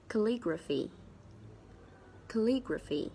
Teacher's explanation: there are four syllables and of course the stress is on the second syllable